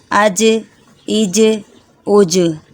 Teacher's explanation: اب جیم کو ہمیں ہلا کر پڑھنا ہے، حمزہ جیم زبر اج، حمزہ جیم زیر اج، حمزہ جیم پیش اج، اج، اج، اج۔ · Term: حروف قلقلہ